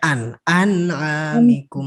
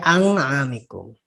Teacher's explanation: Hm anamikum tuh dibacanya an anamikum jelas nun mati I nah nun mati bertemu dengan Ain Ain dibaca jelas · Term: Idhar